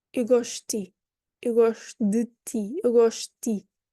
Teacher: a D followed by a mute E and then a T, you're just not going to hear the D